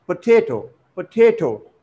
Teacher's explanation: the stress falls on the second syllable